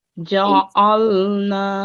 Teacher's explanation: this is the ayn sound from the middle of the throat